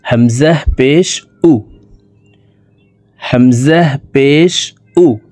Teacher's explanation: ঠোঁট গোল করে দ্রুতভাবে হামজা বলে পড়ব